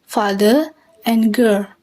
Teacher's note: in both father and girl the r is silent so father and girl the vowel of cut does not exist